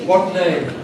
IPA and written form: ˈwɒt ˈneɪm (what name)